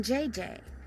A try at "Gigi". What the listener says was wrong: Gigi. En français, you pronounce G like J and J like G. She may very well be JJ in America, but in France, she is Gigi.